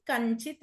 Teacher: మకారం ఉన్నప్పుడు అత పక్కన చిత్ చనాలో ఎప్పుడు చకారమే ఉంటుంది కాబట్టి ఆ చకారానికి ఉన్న అనునాసిక శబ్దమైన చచచ జజజ్ఞ ఏదైతే ఉందో అది వస్తుంది మకారం ప్లేస్ లో జ్ఞకారం వస్తుంది కంచిత్ అయింది ఇక్కడ కం ప్లస్ చిత్ కంచిత్ అయింది.